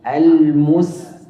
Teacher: القاف مفخم لكن التاء مرققة